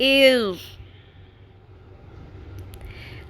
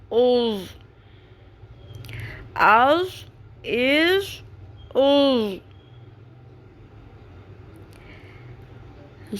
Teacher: ضاد تھوڑا سا مشکل حرف ہے اس کا مخرج، کیونکہ اس میں زبان کی بائیں سائڈ والی، بائیں طرف والی کروٹ جو ہے، سائڈ جو ہے زبان کی، وہ اوپر والی داڑھوں کی جڑوں کے ساتھ ٹکراتی ہے۔ دال کی آواز کلیئرلی، دال کی آواز نہیں آنی چاہیے۔